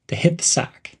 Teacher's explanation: bed link the words hit andthe and pronounce them as hitthe emphasize the word sack